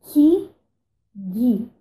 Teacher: Palatal ocorre no palato, ok? No caso, no palato duro, nós temos como palatal ki, gi.